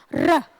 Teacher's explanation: र के उच्चारण में मुंह के अंदर एक वाइब्रेशन होती है, र, झरनाटा सा, जैसे हम बोलते हैं ना अपने देसी भाषा में, एक वाइब्रेशन, झरनाटा, झरन झरन की आवाज आती है, र, इसलिए इसको प्रकंपित वर्ण का नाम भी दिया गया है।